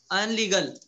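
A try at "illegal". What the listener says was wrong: इलीगल, इल, आई अल नहीं है, अल नहीं कहना, इल, इलीगल, लोग बार ये बोल रहे हैं, अनलीगल ही बोल रहे हैं, हाँ, I double L E जी A L, इलीगल, ये बदनवानी,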